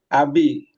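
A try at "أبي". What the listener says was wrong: Kurang panjang sedikit saat ujungnya, Ustaz. Abi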